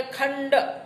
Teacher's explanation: મૂર્ધન્ય અનુનાસિક અણ, દાખલા તરીકે ખંડ